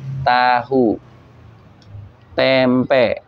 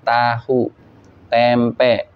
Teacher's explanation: tahu tempe itu di mana bunyinya ujung lidahnya ketemu dengan gusi